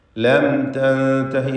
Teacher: സാക്കിനത്തായ മീമിനെ ഇൽഹാർ ഷഫവി നൽകി മണിക്കാതെ വെളിവാക്കുക. തൻതഹി എന്ന പദത്തിൽ സാക്കിനത്തായ നൂൻ ഇഖ്ഫാ ഹഖീഖി നൽകി മറച്ച് മണിക്കണം.